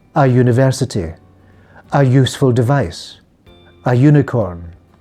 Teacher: The pronunciation of the letter U in these sounds is like the consonant Y, so we don't use an.